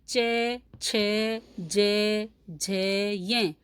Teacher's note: अब हमारी जीभ देखिए कहाँ स्पर्श करती है, बिल्कुल दांतों के ऊपर वाले हिस्से को स्पर्श करती है, तो वो स्थान हमारा तालु होता है।